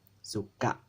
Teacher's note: That glottal stop accent is on the last vowel, so that vowel is going to get a glottal stop. Suka. You're going to cut off your breath there.